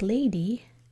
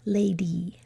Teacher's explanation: In a two-syllable word like lady, what sound is the Y making there? Lady. It's the E sound.